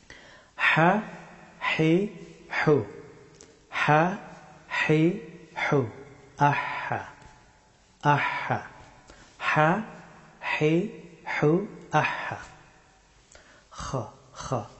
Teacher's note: হা হরফটি উচ্চারিত হয় গলার মধ্যস্থল থেকে